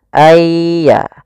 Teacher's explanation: masukkan nunnya kepada ya Sehingga nunnya hilang tinggal ynya ayya langsung ditasdidkan dia seakan-akan ynya duait Ya Sukun dan ya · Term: idgham bi gunnah